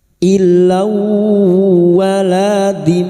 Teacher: fathatain bertemu wawu idgham bighunah masuk dengan mendengung masuk pada huruf wau dan mendengung selama tiga harakat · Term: idgham bi gunnah